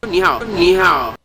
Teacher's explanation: your h sound is way too aspirated, and the back of your tongue is positioned too low.